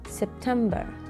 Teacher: التشديد هو على القسم المتوسط في هذه الكلمة September، يعني القسم الأكثر وضوحاً بهذه الكلمة هو القسم المتوسط September.